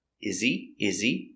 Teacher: Is he, remember, no H sound.